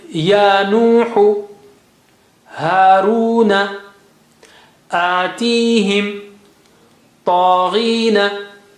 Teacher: all of them have double mads, like standing fatha is double, gives double equal to alif mad, and then you have waw mad or ya mad in all of these.